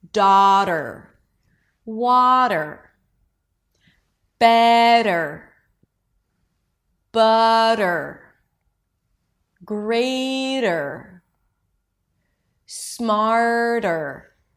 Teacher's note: Make sure that the first vowel, the vowel before is longer. Okay? So you give yourself time to kind of prepare for this transition.